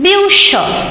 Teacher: the r is silent present in the spelling but not present in the pronunciation